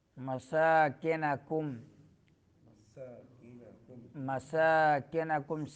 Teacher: سین کو سیٹی نکالنی ہے اور لمبا کرنا ہے، کڑی زبر ہے ایک الف کے مقدار۔